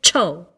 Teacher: if you add an aspirated T sound, you get cho